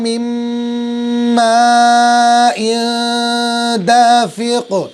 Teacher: نون ساکن کی آواز یہاں پر بھی ختم لیکن گنہ ہوگا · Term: ادغام مع گنہ